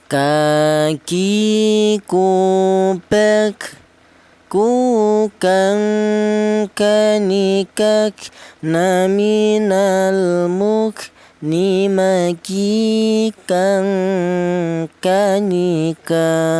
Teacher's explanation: Huruf kaf ini keluarnya huruf berasal dari pangkal lidah atau lidah bagian belakang. Di mana lidah bagian belakang itu ditempati dua huruf, yaitu huruf kaf dan huruf qof.